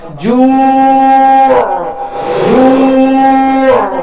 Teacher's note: یہاں عین کو ہم نے ساکن کیا عارضی طور پہ کیونکہ وقف کیا ہے، اور عین پر جو ہے آواز کا اختتام ہوگا.